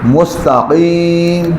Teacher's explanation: زبان کی جڑ اور تالو کا نرم حصہ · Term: قاف